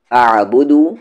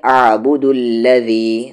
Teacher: دال کو آگے ملا دیں گے